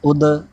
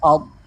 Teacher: اگلا حرف حرف مثالیہ میں سے ہے، اس کو ہر حالت میں پوری یعنی موٹا پڑھنا ہے، اور دال اور ضاد میں فرق بھی واضح کرنا ہے۔ اس کے اندر کلکلا کریں گے، دال کے اندر، اور ضاد کے اندر کلکلا نہیں ہوگا، ان دونوں میں واضح فرق ہو جائے گا۔